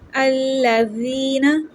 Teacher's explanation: الذین، زال سافٹ ہے، اس کو نرمی سے پڑھیں گے۔ یا مدہ ہے، 1 سیکنڈ کی لمبا کریں گے